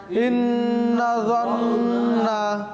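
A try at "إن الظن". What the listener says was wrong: গুন্না গুন্না আছে, দুইটা গুন্না আছে এখানে। হ্যাঁ, নুনে মুশাদ্দাদ দুইটা। ইন্নায-যন্না। জন্না বলছেন, জন্না হবে না আবার। ইন্নায-যন্না।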